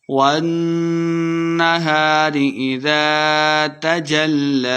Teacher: والنہار نون مشدد ہے تو غنہ کر کے پڑھیں گے